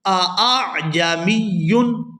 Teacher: پہلے حمزہ کو تحقیق کے ساتھ یعنی خوب واضح کر کے اور دوسرے حمزہ کو تسہیل کے ساتھ یعنی تحقیق اور ابدال کی درمیانی حالت میں ادا کریں گے